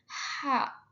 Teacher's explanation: Nah, tidak ada getaran dan dia tuh masuk ke artikulasi geseran. H. Itu lembut banget ketika mengeluarkan suaranya.